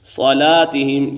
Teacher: صلاتہم یہاں پر لام کے بعد الف زبر ہے، یہ الف مدہ ہے، الف مدہ حرف مدہ کا الف مدہ کو ایک الف یعنی 2 حرکات کے برابر کھینچ کر پڑھیں گے